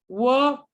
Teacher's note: My lips coming together and then opening, and then the back of my tongue raised towards my velum.